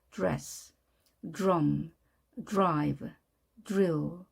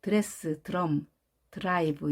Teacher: D와 R이 모이면 dress, drum 이것이 아니라 dress. 마치 드가 즈로 발음되는 그 사이에 발음 소리가 납니다.